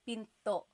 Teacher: Do you hear the glottal stop when I say pinto?